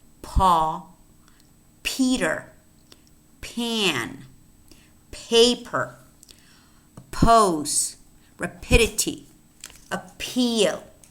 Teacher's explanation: what happens in the enunciation of these aspirated stop sounds is that they imply a brief puff of air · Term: aspiration